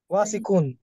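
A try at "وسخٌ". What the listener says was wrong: It should be faster. Okay, there is no long vowel between waw and sin. So it should be wasikun.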